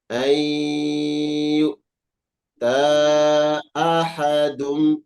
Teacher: Iya, perhatikan nun sukun bertemu. Ya, didengungkan.